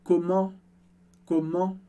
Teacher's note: esse é um som nasal do francês também, mas diferente do en em demain